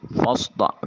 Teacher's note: فا کی ادائیگی کے وقت سامنے والے دو دانتوں کا کنارہ نیچے والے ہونٹ کے شکم سے ملے تو فا ادا ہوتا ہے۔ صاد حرف مستعلیہ ہے، موٹا اور پر کر کے ادا کریں گے۔